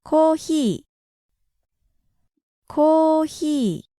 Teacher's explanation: in Japanese there isn't a pure F sound, and so there is no fi sound. So instead of fi, they go with hi.